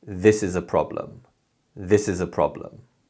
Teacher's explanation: when we say this sentence we put more emphasis on the word this and the first syllable of problem and other words and syllables become weak sounds so we say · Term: stress